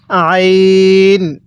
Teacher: তাহলে আইনটা পড়ার সময় গলার মধ্যে চাপ দিয়ে পড়ব।